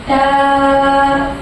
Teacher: تا کی صفت نرمی. تا کا مخرج زیرہ زبان اوپر کے سامنے والے دانتوں کے سرے سے مل کر تا ادا ہوتا ہے